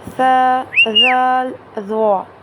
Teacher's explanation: زبان کی نوک جب اوپر والے دانتوں سے لگتی ہے تو ث، ذال، ظا یہ ادا ہوتے ہیں